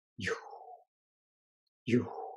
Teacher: as you can see it's sort of a falling tone